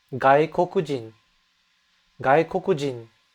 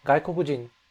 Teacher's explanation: So that N sound is very subtle at the end, gaikokujin.